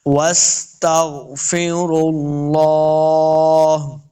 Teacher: ہا کو ساکن کرنا ہے، ہا کی صرف آواز آئے گی